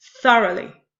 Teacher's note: a look at thoroughly the first syllable it has three syllables the first syllable is stressed followed by two unstressed syllables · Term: dactyl